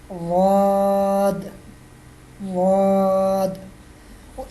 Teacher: زبان کی کروٹ اور اوپر والی داڑھوں کی جڑ سے ادا ہوتا ہے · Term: ضاد کا مخرج